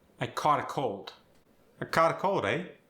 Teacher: if it's an aw sound or an ah sound, they both get the ah sound